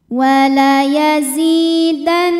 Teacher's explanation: Cara membacanya didengungkan. Jadi bunyi N tahan sampai ada suara masuk hidung, kurang lebih 2 harokat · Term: gunnah musyaddadah